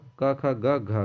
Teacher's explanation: घ का उच्चारण स्थान कंठ है